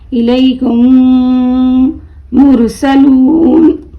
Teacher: मीम साकिन के बाद मीम आए तो मीम को मीम से मिलाकर गुन्ने के साथ पढ़ा जाएगा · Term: इदगाम शफवी